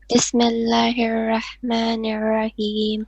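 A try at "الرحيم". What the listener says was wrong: Not Rahim. You're doing Ra, Ha, bottom throat. It's Rahim, Ha, middle throat.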